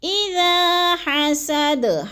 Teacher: اذا کو تھوڑا سا کھینچنا ہے، الف مدہ ہے. اذا حسد، حسد کی دال جو ہے وقف کی صورت میں ساکن کر کے پڑھیں گے، جزم لگا کر، اور تھوڑا سا ہم نے اس پہ قلقلہ بھی کرنا ہے، ہلانا ہے اس کو.